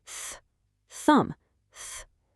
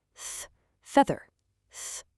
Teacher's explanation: Thumb is just pure air. Feather has that strong vibration. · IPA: /θ/ ; , /ð/